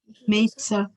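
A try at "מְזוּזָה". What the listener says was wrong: The second letter after the mem is Zion. Z. Zion, not Sa. Not a Tzai. Z. we have a Zion, which is a straight Z, Z, Z, Z, like a buzz, Z, B. And a Tzadi, looks like it's got those two pieces, they're like the old TV thing, like the rabbit ears. That's a ts.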